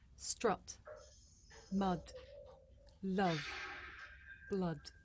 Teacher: This is a short vowel sound. It's pronounced ah.